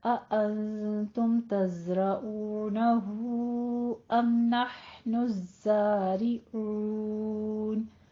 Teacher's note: أأنتم اخفا حقیقی ہے، تم میں اظہار شفیع کرنا ہے، رو کو پر پڑھنا ہے. ہو میں مد صلہ کبرا ہے اور آگے الزارعون زئی کے اوپر تشدید ہے، سختی کر کے فتح قائمہ ادا کرنی ہے.